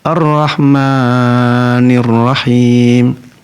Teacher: Harusnya 2 harokat dia baca sampai 4 harokat. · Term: panjang yang melebihi batas